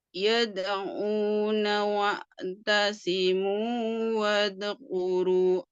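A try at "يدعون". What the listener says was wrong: Ya.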